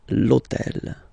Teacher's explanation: in French we don't pronounce H. Okay, so basically the first sound of the word is the vowel O.